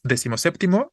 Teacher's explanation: Cuando decimos decimoséptimo, es una sola palabra, unimos los dos elementos y recorrimos la tonicidad, o más bien le quitamos la tonicidad a décimo y solo la está conservando séptimo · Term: sílaba tónica